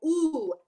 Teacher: ooh is our semi-occluded tone, but at the same time, you're having to go up the octave, which requires a little bit more of a kick in your support, right?